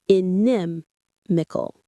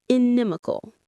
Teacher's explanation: The stress here is on the second syllable, inimical.